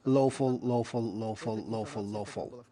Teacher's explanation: But the intonation that we need is low fall at the end of the syntagm.